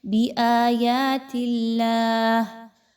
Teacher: حرف جلالہ سے پہلے تا کے نیچے چونکہ زیر ہے اس لیے اس کو باریک پڑھا جائے گا۔